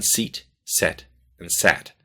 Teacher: Compare e, and a in English, as in seat, set, and sat. You'll notice your tongue starts up high, e, goes to the middle of your mouth, and then goes down to a.